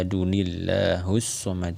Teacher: tersebut hari yang ada di tanwin yang berada di kata Ahad karena dia dikasroh kan maka lam yang berada di lafazh jalalah ini harus kita baca dengan tarqiq